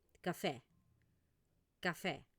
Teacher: esta e se pronuncia con una e un poco con la boca un poco más abierta